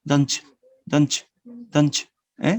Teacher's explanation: When you speak in a connected way, so you are going to join the sound ta, don't, and the sound ya, you. Ta and ya becomes the sound ch, the affricate, no? The affricate sound, ch, don't, don't.